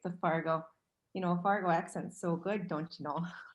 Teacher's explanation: how it's right up on the roof of her mouth and she doesn't drop her jaw